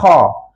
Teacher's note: halkum hujung halum bukan dekat lidah Mak dekat hujung halkum tetapi masa kita sebut Kha tu keadaan pangkal lidah kita terangkat sebab tu dia jadi tebal